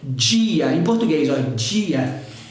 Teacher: Se você parar para pensar na palavra dia, o oposto da noite, você já não está fazendo mais di, não é mais a ponta da língua, é o meio da língua